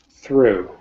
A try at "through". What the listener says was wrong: True is not through, so you're not producing the th sound.